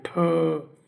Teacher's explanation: अघोष मतलब कि स्वर तंत्रियों में कंपन नहीं होती, और महाप्राण मतलब होता है कि मुख से अधिक हवा निकलती है · ठ देखिए मूर्धन्य है, ऊपरी छत का अगले भाग से हम लोग इसको बोलने का प्रयोग करते हैं